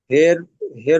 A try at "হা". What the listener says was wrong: হে নয় হা, ওটা হা, হার উপরে